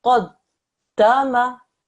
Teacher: the tashdid, the pressing down of the dal, is taken care of